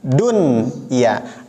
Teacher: Yang pertama, ad-dunya, dun, ya, nunnya tetap dibaca izhar, dibaca jelas, izhar mutlak. Nunnya dibaca izhar, dibaca jelas. Padahal di sini nun mati bertemu dengan ya, jadi bacanya bukan duya, tapi tetap dunya karena ini pengecualian.